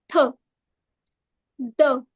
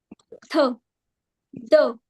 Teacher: So our tongue the tip of the tongue is touching the upper front teeth. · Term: dental